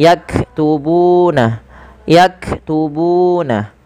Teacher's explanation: dan panjangkan bu sepanjang dua harakat karena ia mad thabi'i